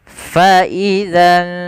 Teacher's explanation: samarkan ke huruf syin kemudian ditahan dua harakat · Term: Ikhfa